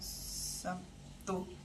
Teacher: Asimilasi contoh kata Sabtu diucapkan Sabtu, bunyi B berubah menjadi P.